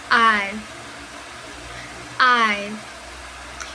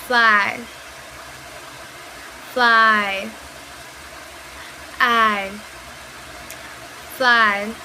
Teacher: To produce this sound, we need to move from the sound A to the sound E. We start in an open position and then we glide to a more closed position. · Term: diphthong